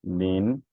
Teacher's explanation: so your sound will move upward your tone will move up move upward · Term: rising tone